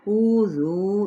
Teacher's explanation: الف مدہ، کذبوا ذال نرمی کے ساتھ، بو پہ واو مدہ، واو ہونٹوں کے نا تمام گلائی کے ساتھ · واو مدہ، واو ہونٹوں کے نا تمام گلائی کے ساتھ، اوذو دونوں طرف واو مدہ ایک مقدار میں کھینچیں گے